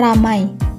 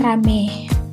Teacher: Perubahan ini terjadi pada bunyi vokal rangkap AI ke vokal tunggal E. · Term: Monoftongisasi